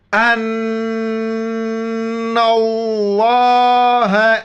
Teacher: نون پر جو ہے نا شد ہے، غنہ کریں گے. لفظ اللہ سے پہلے نون پر زبر ہے، لفظ اللہ کو موٹا کر کے پڑھیں گے. ان اللہ، حمزہ نون زبر ان، نون لام زبر نل، لام کڑا زبر لا، ہا زبر ہے.